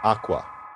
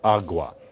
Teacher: Now, one ordinary change for something like that is Spanish, where it's agua. So k softened into a g.